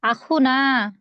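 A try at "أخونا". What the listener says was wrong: আখু টান হবে, আখু না, আখু।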